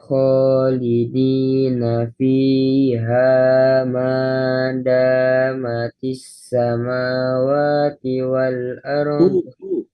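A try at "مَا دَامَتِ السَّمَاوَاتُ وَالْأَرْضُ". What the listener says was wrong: Bukan ti tapi tu.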